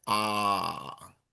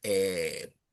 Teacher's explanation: For AR, of course, the dominant vowel is ah. For ER is eh.